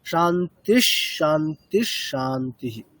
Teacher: প্রথম দুটির ক্ষেত্রে আমরা নিচের দিকে নামবো, যেমন ওম শান্তি শান্তি, তারপরে শান্তি উপরের দিকে